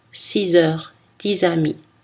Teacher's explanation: Mais pour les chiffres 6 et 10, cette consonne finale devient Z.